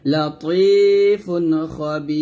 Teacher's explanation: এখানে র সাকিনটা মানে র যেহেতু সাকিন হয়ে গেছে, তো আমরা এখানে পাতলা করে পড়ব।